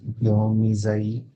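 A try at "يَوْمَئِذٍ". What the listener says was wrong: యా ఫతా వావ్ సుకున్ ఏమైపోయింది? లేదు, దాంట్లో తప్పు చెబుతున్నారు మీరు. యౌమా వరకు కరెక్ట్. మీమ్ తర్వాత ఏమన్నది? హంజా కస్రా ఎలా వస్తుంది శబ్దము? హంజా కస్రా లేదు. యౌమ హంజా కస్రా ఈజీ. జాల్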